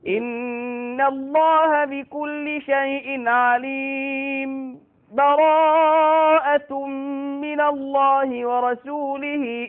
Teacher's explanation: السكت أسكت على كلمة عليم بس ما أخدش نفسي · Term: السكت دون تنفس